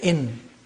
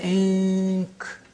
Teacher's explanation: The N is pronounced from behind the teeth, ridge, say in. · Al-ikhfa means pronouncing the noon not from the point of articulation of noon, which is behind the upper teeth, but from the point of articulation of the next letter.